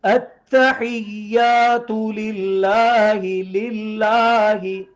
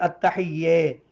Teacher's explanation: اچھا بعض لوگ اس کو یا کی آواز کو بڑی یا کی طرف بھی التحیہ, یہ نہیں ہے, یا کے اوپر زبر ہے اور آگے الف ہے, ایک الف کے برابر اس کو لمبا کریں گے جیسے کھڑا زبر والے حرف کو پڑھتے ہیں.